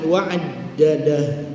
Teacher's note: dal adalah huruf tasydid, huruf yang bersabdu, dan juga huruf syiddah, tertahannya suara dan nafas. Jadi wa'ad, suara tertahan, nafas terhenti, nafas terhenti dan suara.